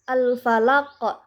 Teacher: cara membacanya dipantulkan dengan pantulan yang kuat ataupun dengan pantulan yang besar. Padahal huruf qa ini asalnya huruf hidup, tapi karena diwakafkan jadi mati. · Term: qalqalah kubra